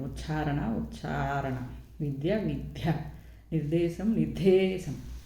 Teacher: అల్ప ప్రాణాలకు బదులుగా మహాప్రాణాలు పలకడం